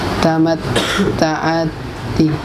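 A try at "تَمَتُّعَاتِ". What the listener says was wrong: Jangan tamatta, tamat tu.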